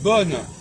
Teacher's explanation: Vous perdez le on de bon.